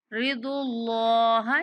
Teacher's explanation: ما تیسر، ما تیسر منہ، ما تیسر منہ، ما تیسر منہ، وَأَقِيمُوا الصَّلَاةَ وَآتُوا الزَّكَاةَ، وَآتُوا الزَّكَاةَ، وَآتُوا الزَّكَاةَ، وَأَقْرِضُوا اللَّهَ، کاف پر کلکلا، رضو اللہ، یہاں پہ اللہ کے لام کو موٹا کر کے پڑھیں گے کہ اس سے پہلے پیش آ رہی ہے